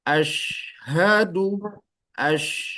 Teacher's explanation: memang sengaja disebarkan karena mendapatkan sifat tafasyi jadi Ashadu as ada udara yang menyebar · asyhadu ada udara yang menyebar